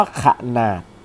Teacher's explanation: พยางค์แรกนี่จะออกเสียงเป็นเสียงอ่ะหนึ่งเสียงและพยางค์ที่สองจะออกเสียงเป็นแบบมีหอนำ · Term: อะกึ่งเสียง